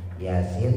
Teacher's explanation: Yanya dua harakat. Sinya enam harakat.